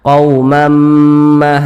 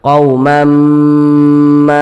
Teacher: dengan dengungan dimasukkan atau dileburkan Apanya yang dimasukkan atau dileburkan itu bunyi tanwinnya ini kita leburkan ke huruf mim begitu kemudian kita gunahkan jadi suaranya itu kita tahan kita panjangkan sebentar quamma di bagian Mamma itu kita panjangkan sebentar quumamma seperti itu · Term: idgham